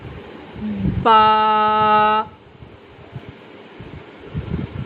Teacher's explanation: با بند ہونٹوں کے گیلے حصے سے ادا ہوتی ہے۔